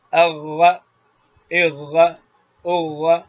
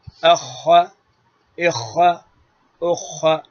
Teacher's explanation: تو اب دیکھیے اغ، اغ، اغ، تو اغا میں ہوا نہیں نکلے گی، بس یہیں پر مخرج ہے خا کا، غین اور خا جگہ ایک ہی ہے، فرق ہوا کا ہے۔ اغا بغیر ہوا کے یہ غین ہے، اور یہیں شروع حلق کوا کے پش سے ہوا کے ساتھ جو حرف نکلتا ہے وہ ہے خا، اس میں ہمس، رخوت، استعلاء، انفتال ہے.